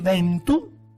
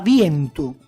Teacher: per epentesi si inserisce una vocale che non ha fondamento etimologico, ma soltanto è un'inserzione tipica della parlata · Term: dittongo metafonetico